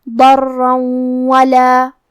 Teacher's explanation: کلمت ولا، واو حروف الادغام بغنہ میں سے ہے، اور ادغام کا معنی ہے حرف کو حرف میں داخل کرنا، تو ہم یہ تنوین کو واو میں ملا کے غنہ اور تشدید کے ساتھ یہ حکم کو ادا کریں گے